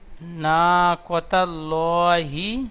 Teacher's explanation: হাটা একটু টান হয়ে যাচ্ছে, হা টান হবে না।